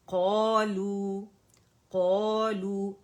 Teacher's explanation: قا موٹا ہے پہلے درجے کی تفخیم کریں گے موٹائی کریں گے قالوا ٹھیک ہے اوور اسٹریچ نہیں کریں گے نہ پونے 2